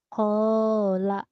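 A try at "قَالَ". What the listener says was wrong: Tadi yang pertama kedengarannya hola. Sudah benar kola. Tapi lanya kan pendek.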